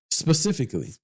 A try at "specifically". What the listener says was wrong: specifically. You took the spa off.